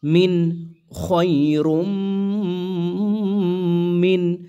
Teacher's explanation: নুন সাকিনের পরে হামজা এই জায়গায় ইজহার কোন প্রকার গুন্না করা যাবে না